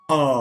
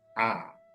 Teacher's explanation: ആ എന്നൊരക്ഷരം നമുക്ക് വേണമെങ്കിൽ ഉയർത്തി ഉച്ചരിക്കാം, ഉദാത്തമായിട്ട് ആ എന്ന് പറയാം. അതേ അകാരന്ന് താഴ്ത്തി ഉച്ചരിക്കാം, ആ.